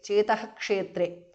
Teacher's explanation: the visarga changes to jihvamulya